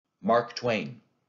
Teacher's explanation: when we say that name in english we give stress to both the syllables two syllables in a row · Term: spondy, spondee